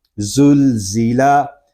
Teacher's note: زا یہ حروف صفیریہ میں سے ہے، اس میں سیٹی کی آواز پیدا ہوگی